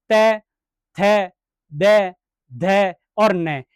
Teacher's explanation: इनके उच्चारण में जो हमारी जीभ है वो दांतों से टकराती है। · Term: दांतों से बोले जाने वाले